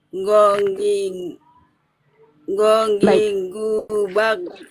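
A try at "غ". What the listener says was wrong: tidak terlalu ditempelkan. Ee dia hanya hampir menyentuh ya yang tenggorokannya itu hanya hampir menyentuh ke langit-langit ya.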